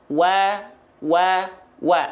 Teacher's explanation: kedua bibir dengan posisi maju seperti mengucapkan huruf u jadi posisi bibir Harus Ma maju nah banyak orang wa wa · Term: huruf Wau